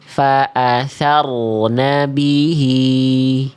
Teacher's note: ro sukun di sini tebal tebal berarti kan diangkat pangkal lidahnya. Nah, berarti kita bunyikan bunyinya.